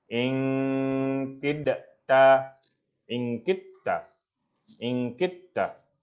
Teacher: Seolah-olah kita baca ingkitta, seolah-olah kita baca apa? Kita baca huruf ta. Dal tu kita tinggalkan. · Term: idgham